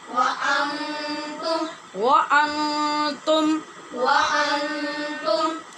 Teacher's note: یہاں نون پہ اخفا ہو رہا ہے اور تم یہ میم ساکن پہ اظہار ہے